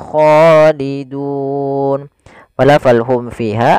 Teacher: ada mim bertemu Fa kita hukumnya dengan is syafawi suara mimnya halus jelas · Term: Idhar syafawi